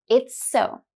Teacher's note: There's a link of two consonants, s in it's and s in so.